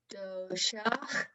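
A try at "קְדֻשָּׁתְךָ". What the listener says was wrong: There's no vowels actually under dalet or shin. Kad, she, kad shecha.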